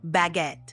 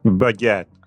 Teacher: It's pronounced almost like it looks. Baguette, with a little emphasis on the second syllable